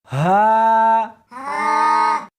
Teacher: اس حرف کو سینے کے اندر سے نکالنا ہے